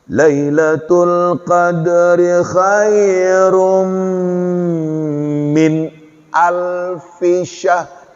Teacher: Tapi yang sebelumnya dengung, ya, karena kita lihat di situ tanwin ketemu dengan mim, idgham bi gunnah